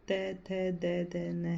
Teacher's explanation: ये दांतों से बोले जाते हैं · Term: दंत्य व्यंजन